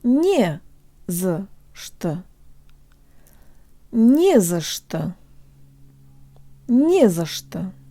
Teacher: Although there are 3 little words in this phrase, it functions just like a single word, with only one stressed syllable, nie.